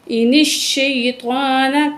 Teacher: نون میں غنہ کریں گے، نون کو شین سے ملائیں گے